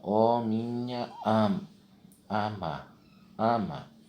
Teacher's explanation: Todos os dois A's aqui são átonos. Por isso que eles são juntados e formam uma única sílaba poética.